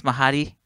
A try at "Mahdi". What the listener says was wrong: adding an extra A in there. Like Marty McFly.